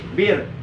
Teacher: Bir itu dibaca tipis, bir. Jadi nggak boleh dibaca tebal, nggak boleh biol, nggak boleh, tapi bir biasa aja. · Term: ro tarkik